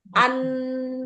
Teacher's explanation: Mahrojnya nun itu ada di mana? Ujung lidah bertemu gusi atas kan di situ.